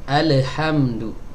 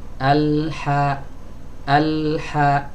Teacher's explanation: Ya, alhamdulillah. Alhamdu, huruf lam bukan huruf qalqalah. Ya, jadi dia jangan dipantulkan.